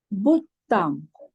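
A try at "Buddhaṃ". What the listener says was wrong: I hear T sound. You have to get rid of the T sound. It is D sound. Buddhang. 2 Ds. You have to get rid of T.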